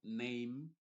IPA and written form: neɪm (Name)